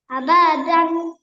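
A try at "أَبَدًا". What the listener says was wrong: আবাতে টান আছে, হরকতের উচ্চারণ কিভাবে পড়তে হবে? হরকতের উচ্চারণ তাড়াতাড়ি পড়তে হবে, তো তাড়াতাড়ি দেখেন, হরকত, এখানে হরকত আছে, তানভিন আছে। তাড়াতাড়ি করে পড়তে হবে।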